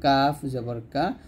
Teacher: উপরে তালুর সঙ্গে লাগিয়ে কাফটা হালকা করে উচ্চারণ করবেন